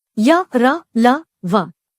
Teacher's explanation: अतंस्थ का अर्थ है स्वर और व्यंजन के बीच में स्थित इनका उच्चारण जीभ, तालु, दांत और होठों के निकट आने से होता है, किंतु श्वास में रुकावट कम होती है। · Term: अंतस्थ व्यंजन